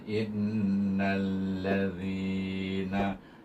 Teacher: Nun alif lam nal innalladzina, zi dia baca dengan mak asli. Dengar tadi bunyi panjang pada zi, in 2 harakat. · Hamzah ya nun nun bertasydid baca dengan wajibul gunnah dengan dengung 2 harakat. Nun bertemu dengan alif lam syamsiah, maka hendaklah idgham samsi kepada huruf lam.